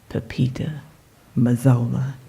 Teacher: the metrical foot of unstressed, stressed, unstressed